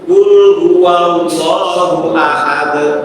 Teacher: Allahnya itu dibaca panjang dua harokat, tidak boleh lebih, tidak boleh kurang. Maka namanya mat tabi'i.